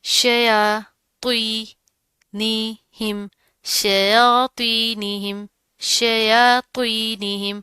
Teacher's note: یا کے اوپر کھڑا زبر آ رہا ہے، ٹھیک ہے، ایک الف کے برابر پڑا جائے گا. تو اس کے نیچے زیر ہے، لیکن آپ نے تو کو موٹا پڑھنا ہے.